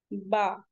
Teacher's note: बा कहते हैं तो हमारे लिप्स बंद हो जाते हैं